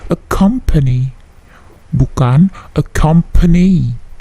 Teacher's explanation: Accompany, bukan accompany, tetapi accompany. P-nya sedikit plosif. Tidak plosif yang terlalu besar, tetapi plosifnya ada ya.